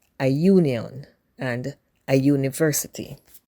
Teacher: Likewise, union and university. Even though they start with a vowel U, they are pronounced with a consonant sound like the Y in U. So the article a is used before these nouns.